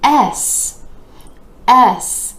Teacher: this letter name starts out with that E vowel sound where you're dropping the jaw just a bit and moving into the S consonant